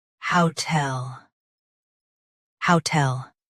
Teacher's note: Stress how. Keep tail light and clear.